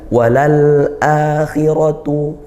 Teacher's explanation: disempurnakan sifat lam sukunnya yaitu mengalir sedang. Kemudian akhiratu hamzahnya dikuatkan dari makhrajnya yaitu di pangkal tenggorokan dan panjang. · al ya bertemu huruf hamzah, huruf qamariyah dibaca izhar, jelas ya lam sukunnya. Maka disempurnakan sifat lam sukunnya yaitu mengalir sedang. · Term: izhar qamariyah